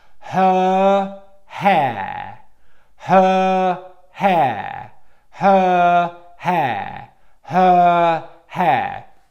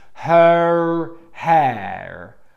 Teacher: And then the line stops, and then it changes, and that's when you make the next sound. But you're not going towards the next sound whilst you're making the long English vowel sound